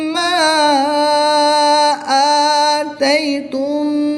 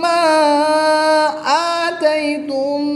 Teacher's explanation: الف مدہ کے بعد حمزہ دوسرے کلمے میں ہے تو یہاں پر مد منفصل ہوگی، 2 سے 3 الف تک کھینچ کر پڑھیں گے